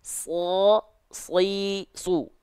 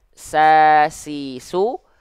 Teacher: kalau huruf yang tebal dia vokalnya O, kalau huruf yang tipis dia vokalnya A